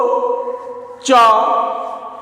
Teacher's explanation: तालु और जिह्वा का संपर्क होता है, स्पर्श होता है, तो च वर्ग का उच्चारण होता है